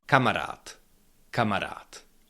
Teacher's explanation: You can hear that it's not d, it's t. And this is called assimilation.